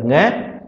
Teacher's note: इसका उच्चारण स्थान है कंठ लेकिन ये नासिका से भी बोलेगा